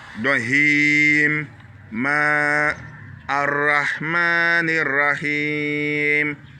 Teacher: Ici, on tire le Ma, c'est une longue syllabe.